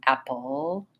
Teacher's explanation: my tongue is further back and down with that schwa sound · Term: syllabic l